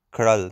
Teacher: And be careful about the sound of krl. Krl is with a retroflex R, it's a R sound, and the A is a, like a schwa sound, like krl, not kral, but krl.